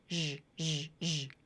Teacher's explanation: a final Z linking to a Y consonant. You get the ZH, zh sound, like in the words treasure or measure. Zh, zh, zh.